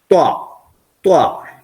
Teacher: ഇത് കണ്ടോ ത്വ ആ കറക്റ്റ് പോയിന്റ് കൊടുക്കുന്ന സ്ഥലം കണ്ടോ ത്വ നാവിന്റെ നാവിന്റെ അറ്റമല്ല അറ്റത്തിന് നേരെ മുകൾ ഭാഗം അത് നമ്മൾ മേലെ പല്ലിന്റെ മുരടിന്ന് കുറച്ച് മേലോട്ട് കയറിയിട്ട് ഉച്ചരിക്കണം